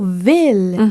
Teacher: On ne prononce pas « ville », mais plutôt « ville ». Et donc, c'est un « i » plus ouvert. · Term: ouverture